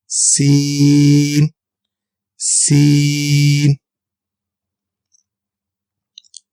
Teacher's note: زبان کی نوک اور دونوں دانتوں کے اندرونی کناروں سے ادا ہوگا